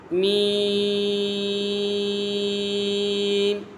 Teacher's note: اس کا مخرج ہے دونوں ہونٹوں کے خشک حصے سے ادا ہوتا ہے۔ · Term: حرف شفویہ